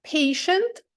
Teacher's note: ненаголошена а і за нею ще якась ненаголошена голосна і вони разом змінюють звук ц на звук ш